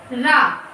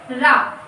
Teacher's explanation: आपकी जिह्वा में कंपन होने लगता है थोड़ा सा। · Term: लुंठित या प्रकंपित व्यंजन